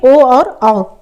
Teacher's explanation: तो ये ओ और औ, जब ओ और औ हम स्वर बोलेंगे तो हम कंठ का भी इस्तेमाल करते हैं और ओठ का भी इस्तेमाल करते हैं। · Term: कंठ और ओष्ठ